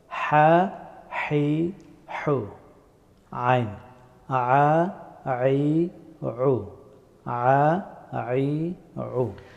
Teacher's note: হা এবং আইন এই দুইটা হরফ গলার মধ্যস্থল থেকে উচ্চারিত হয়